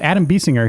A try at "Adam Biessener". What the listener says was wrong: You keep putting the G in my name, which is not really there.